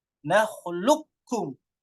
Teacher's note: nahlukum ini qafnya dihilangkan langsung masuk ke kaf idgham kamil